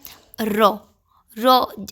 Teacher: ऐसे व्यंजन जिनको बोलने में जो जीभ होती है उसके आगे भाग में कंपन होती है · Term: लुंठित व्यंजन